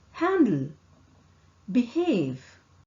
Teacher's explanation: H sound is produced with the organs in the mouth and it does not move. The air passes between the open vocal cord and out of the mouth. Vocal cord does not vibrate.